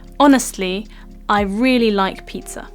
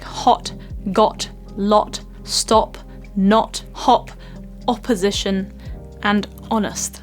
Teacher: at the start honest and when you're creating the sound honest the lip shape is very round and quite small and so it's not very long wide like some of the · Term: Short Round o sound